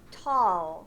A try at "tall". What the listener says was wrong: But we don't have to go la at the end. We just tall. If you just touching your teeth to your tongue and you makes the sound.